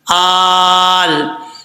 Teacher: हमजा लाम खड़ा ज़बर, आल। खड़ा ज़बर जो होता है वो मद असली के बराबर होता है, एक अलिफ की मिकदार लंबा किया जाता है, आल। अब यहाँ पर मद है तो मद लाजिम है, इसको 5 अलिफ के बराबर जो है आप लंबा कर सकते हैं।